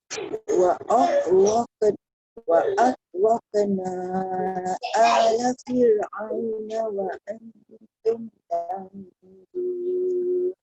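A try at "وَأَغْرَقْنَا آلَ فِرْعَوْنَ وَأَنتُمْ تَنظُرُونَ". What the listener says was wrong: Nanti bonda highlight sikit dekat qaf tu. Dia jadi nipis tadi tu sebenarnya. Sepatutnya dia tebal Terus.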